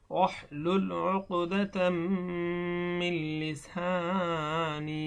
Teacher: এখানে তানবিনের পরে মিম আসার কারণে এখানে গুণনা হয়েছে, এটা হলো ইদগাম, নুনে সাকিনের ইদগাম।